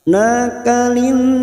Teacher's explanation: nun yang bertasdid guna musaddada, kita tekan selama 3 harokat dan ditahan, kita dengungkan dan ditahan selama 3 harokat.